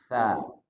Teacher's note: di mana makhraj tsa ujung lidah bertemu dengan ujung gigi serari atas bunyinya tsa ya Bukan Sasa apalagi Sya Walaupun ada